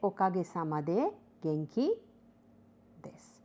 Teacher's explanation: the intonation is flat